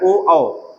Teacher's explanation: ओ का निर्माण कैसे होता है ये आ से होता है और उ से होता है अब आ का उच्चारण स्थान कहां से है कंठ से है